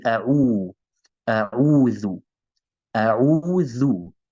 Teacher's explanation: we have the dhamma on the ayn, so we round our lips.